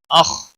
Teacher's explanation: خا کو موٹا پڑھیں گے